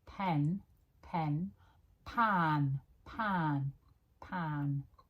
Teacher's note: My mouth is much more open for the a